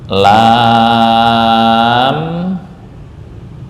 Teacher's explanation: Lam ini panjangnya enam harakat.